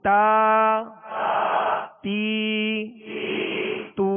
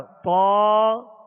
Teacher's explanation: فرق کیا ہے کہ تا کو باریک پڑھیں گے اور طا کو پر پڑھیں گے، موٹا پڑھیں گے، اس لیے کہ یہ حروف مستعلیہ میں سے ہے۔